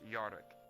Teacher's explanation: you start adding the accent where you trill your Rs